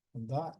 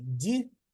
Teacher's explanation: по суті це один звук тільки вимовляється або твердо або м'яко